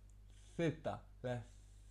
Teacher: La Z, c'est de mettre la langue devant les dents, là, les dents de devant, de mettre un petit peu d'espace comme ça, là, vraiment tout petit espace, et de souffler.